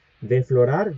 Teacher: Bien, de florar ya sabemos el significado de esa palabra, la resalté acá en azul porque eh hay una epéntesis, perdón, una epéntesis, no, una síncopa del fricativo alveolar sordo acá, porque sería desflorar. Acá se pierde la s.